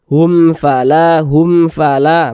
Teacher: huruf w izhar syafawi sama juga dengan izhar syafawi juga begitu karena dia izhar maka dibaca jelas tak berdungung dibaca pendek saja · Karena dia izhar maka dibaca jelas, tak berdengung, jadi baca pendek saja. Hum fala, pendek begitu.